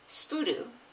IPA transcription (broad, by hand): ʃp^hudu